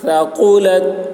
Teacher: ثا کو بہت باریکی کے ساتھ قاف کو موٹی آواز میں